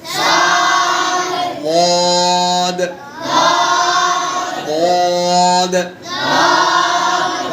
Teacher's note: ضاد জিহ্বার ডান এবং বাম দুই পাশের উপরে লাগিয়ে তারপর উচ্চারণ করতে হয়।